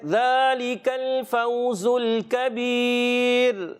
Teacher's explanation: کبیر میں پیارے بچوں را کو باریک رکھنا ہے،